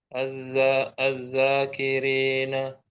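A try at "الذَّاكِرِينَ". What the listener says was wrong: Oke, bagus.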